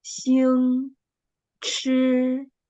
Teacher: The first tone should be higher and flat.